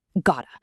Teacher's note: So it's thought with a stopped T. Got to becomes gotta. It sounds like a D when we say it quickly.